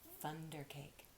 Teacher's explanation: Now, TH, you stick your tongue out. It sounds a lot like letter F.